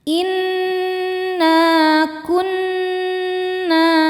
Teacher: Inna kunna nun tasydidnya dihukumi dhunah musyaddadah karena nun bertasydid. Cara bacanya berdengung. Tahan dengungannya kurang lebih dua harakat.